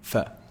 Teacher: Upper incisors with the lower lip.